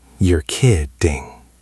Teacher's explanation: The stress, the power of this phrase, is on the first syllable of the second word, kid.